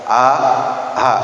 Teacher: Yang pertama, pangkal tenggorokan keluar huruf a dan ha.